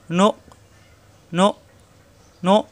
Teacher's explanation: হামজায় সাকিন শক্ত হবে, নু মেলবে হামজার সাথে, নো নো নো, গলার ভিতরে আটকে যাবে। আমরা যদি পড়ি নো ক, তাহলে কিন্তু বাড়ি খাবে, বাড়ি খাবে না, এখানে গলার ভিতরে আটকে যাবে, শক্ত হবে।